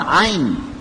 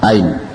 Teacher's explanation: kalau orang Quraisy membacanya Ain di pangkal tenggorokan